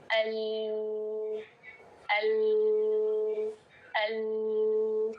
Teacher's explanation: اوپر والے جبڑے کے سارے مسوڑوں میں زبان لگ رہی ہے. ال اور نوک آ کے آگے کے مسوڑوں پہ لگ رہی ہے. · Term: لام